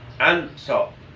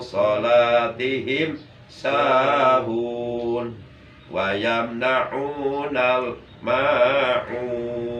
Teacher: Nun matinya tetap harus digunakan, maksudnya ditahan dan disamarkan, tidak berbunyi en. Nun matinya tidak diidghamkan. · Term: ikhfa